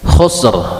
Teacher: jadi rnya Dibaca tafkhim juga tebal karena sebelum huruf ro